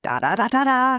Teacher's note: The energy is distributed perfectly evenly. It sounds very steady.